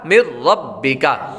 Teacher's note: نون ساکن کے بعد را حروف یرملون میں سے آ رہا ہے، اس لیے غنہ نہیں کریں گے